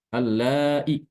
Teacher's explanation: huruf madnya itu dihilangkan jadi dibaca pendek